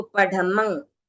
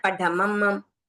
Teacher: अंत में अनुस्वार है तो आपका मुंह खुला रहना चाहिए